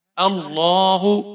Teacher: علیہم قاموا ولو شاء اللہ، یہاں پر آپ شین کو 5 حرکات کے برابر یا 6 حرکات کے برابر کھینچ کر پڑھیں گے، بڑی مد ہے. اللہ، لام کو آپ یہاں پر موٹا پڑھیں گے، اس کے اوپر کھڑی زبر ہے اور کھینچ کر پڑھیں گے ایک الف کے برابر.